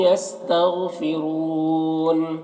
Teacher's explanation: वयस्तग़फ़िरून रौ के ऊपर पेश है, रौ को पुर पढ़ेंगे।